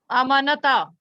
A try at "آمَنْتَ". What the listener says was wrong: کیوں اتنا لمبا کیوں کریں؟ آمنتا.